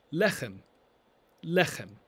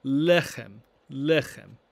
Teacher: Make sure you get that extra throat-clearing sound there